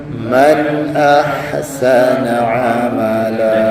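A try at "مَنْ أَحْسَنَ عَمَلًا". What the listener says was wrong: Jangan ambil awal sangat sin biar dia habis fathah dulu.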